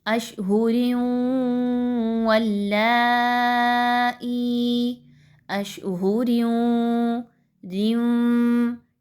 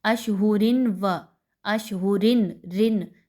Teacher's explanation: یاد رکھیے اس میں نون کی کہیں سے بھی ساؤنڈ نہیں آ رہی · بہت سے اسٹوڈنٹس یہاں پہ کیا غلطی کرتے ہیں، اشہورن و اشہورن رن نون کی آواز نکالتے ہیں. نون کی آواز یہاں پہ نہیں آئے گی، آپ نے ڈائریکٹلی را کو واو کے ساتھ ود غنہ ملانا ہے. آواز کو تھوڑی دیر کے لیے ناک میں روک کر رکھنا ہے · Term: ادغام ود غنہ